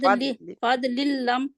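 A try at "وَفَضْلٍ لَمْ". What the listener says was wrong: फद नहीं है ना, दाल का कलकला नहीं करना ऊपर। फद होल्ड करें वहां पे क्योंकि दाद के ऊपर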